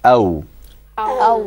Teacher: So what we do here is we form a circle. We form a circle with an incomplete closure of the lips.